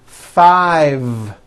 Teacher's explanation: I said 5 with a voiced V.